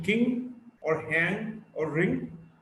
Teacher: Ng is a voiced velar nasal.